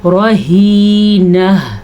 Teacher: کسبت رہینہ، را کو پر پڑھنا ہے، ہا کو چھاتی سے نکالنا ہے، اور وقف کے ٹائم پہ جو ہا نکلے گی اس کی آواز بھی آنی چاہیے